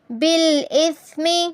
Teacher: سا پر سیٹی کی آواز نہیں آنی چاہیے